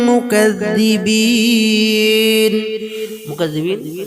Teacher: মুকাযযিবিন তিন আলি পরিমাণ আমরা টানবো মাদ্দে আরদি ওয়াকফি